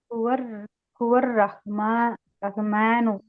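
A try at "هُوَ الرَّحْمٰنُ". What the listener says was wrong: ரஹு ஆக்க கூடாது, ரஹ் சுக்குன். ஹுவர் ரஹ்மானு.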